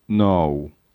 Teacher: observe the tip of the tongue raising towards the gum ridge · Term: lingual sounds